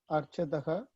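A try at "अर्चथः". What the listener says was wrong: Archataha, Archatha. It's Mahaprana. This Alpaprana, Mahaprana, Ucharanam of the class consonants is important. Archati, Archataha, Archanti, Archasi, Archataha, Archatha, Mahaprana.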